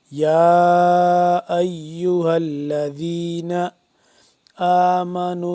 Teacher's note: اور یہاں پہ ہم یا کھڑا مد زبر، یا کھڑا زبر ہے اور اس کے اوپر مد بھی ہے تو اس کو ہم لمبا کریں گے